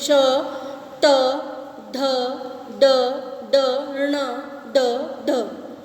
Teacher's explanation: जिन व्यंजनों के उच्चारण में जीभ मूर्ध यानी तालु के मध्य वाले सबसे ऊंचे भाग को स्पर्श करती है मूर्धन्य व्यंजन कहलाते हैं।